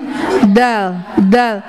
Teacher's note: Ujung lidah dirapatkan dengan gigi seri atas bagian belakangnya. Jangan keluar lidahnya. Ya. Dal.